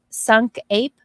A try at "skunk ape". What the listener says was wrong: Skunk ape. There's a K there, you know.